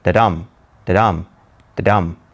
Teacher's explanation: An iamb is what is called a metrical foot that consists of an unstressed syllable followed by a stressed syllable